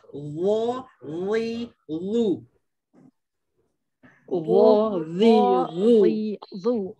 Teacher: za ni dia sebab ada sifat-sifat huruf dia yang sama dengan sod, dengan dot, dengan ta tadi. Kena sebut tebal. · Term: huruf za